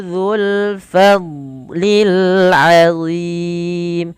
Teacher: fa alirkan nafas, dad tidak boleh mantul, tidak boleh fadlil. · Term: huruf dad